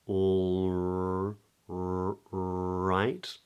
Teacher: So the R is made with the tip of the tongue curling up. All right. Tip of the tongue's up for the R.